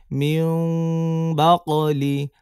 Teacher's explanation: মিম হবে কিন্তু নাকের মধ্যে চলে যাবে মিউ সামান্য মিমে চাপ দিবে মিম বলে সরাসরি ঠোঁট চাপ দিবে না তাহলে তো মিম হয়ে